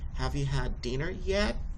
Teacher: Then the rising intonation, you're going to raise your voice at the end of a sentence to ask a question requiring a yes or a no answer.